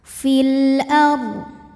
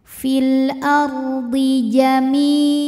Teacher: Ra sukun dibunyikan secara tafkhim sebab huruf sebelumnya berbaris fathah. Maka dibacanya tebal.